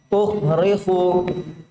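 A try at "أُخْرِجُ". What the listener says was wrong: Salah itu, salah. Ju. Ukhriju, bukan ukhrifu.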